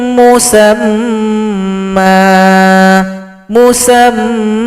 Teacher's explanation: Kalau berhenti di sini musamman menjadi musamma Man menjadi Ma lalu panjang dua ketukan